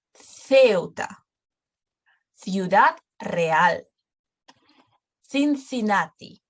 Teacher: we pronounce it as th before E and I, before E, I. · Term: TH sound